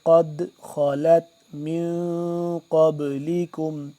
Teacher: قلقلہ کریں گے۔ قد خلت، خا کو موٹا کر کے پڑھیں گے